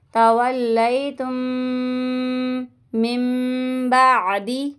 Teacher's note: نون ساکن کے بعد تا آ رہا ہے، میم ساکن کے بعد میم آ رہی ہے، اس لیے گنہ کر رہے ہیں یہاں پہ